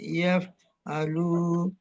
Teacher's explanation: Yaf'aluna lu lunya itu apa? Lya dibaca panjang juga. namanya mad thabi'i